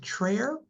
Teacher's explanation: For chair, he did an intrusive R with trair.